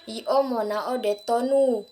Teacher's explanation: Intonasinya itu cenderung naik.